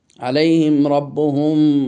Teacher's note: মিম সাকিনের পর বা এসেছে, অর্থাৎ মিম সাকিনের ইখফা হয়েছে, এখানে আমরা গুণনা করব